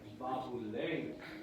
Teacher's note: I mean, the ba is going to have a little stress because it's the first B, but it's ba-bu-leng. So ba is the secondary stress, the primary stress is le.